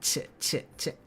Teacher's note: um the ch sound is kind of like a, it's where you would have pronounced a t sound, but it's like it's like it's somewhere between a t and a ch, so it's not ch, it's ch. It's like a little bit more back.